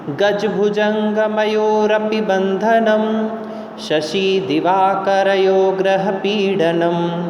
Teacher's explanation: पहले यह छंद द्रुत चलता है, उसके बाद इसका उच्चारण विलंब से होता है, थोड़ा सा धीमी गति से होता है। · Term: द्रुत विलंबित